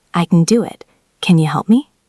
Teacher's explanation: Can is almost always reduced to n.